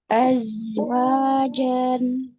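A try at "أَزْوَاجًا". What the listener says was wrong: jan. Lagi, jangan dipotong. Azwajan.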